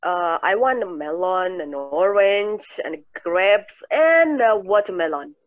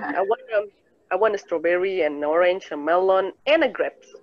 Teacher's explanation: Jadi naik, baru turun. Udah naik, suaranya naik, habis baru turun. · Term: Suara meninggi pada end